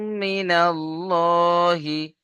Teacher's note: আল্লাহ শব্দকে পুর করে মুখটা গোল করে পড়তে হবে